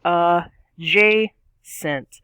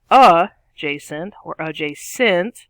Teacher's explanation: we got the stress on the middle syllable